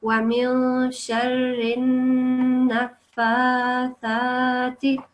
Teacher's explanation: the noon is has a shadda on top. So you have to give it a 2-second like a nasal sound, and then this has a vertical fatha, this one, and this also has a vertical fatha, so they get 2 seconds elongation as well.